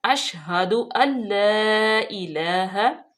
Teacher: शीन पे जो है ये हरूफ शजरिया है, पूरे मुंह में आवाज बिखेरनी चाहिए।